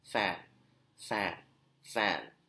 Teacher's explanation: No vibration because voiceless consonants. The glottis is like wide open. There's no obstruction from the glottis against the airflow.